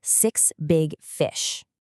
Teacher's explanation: we keep those vowels short, relaxed, and super bouncy. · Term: short I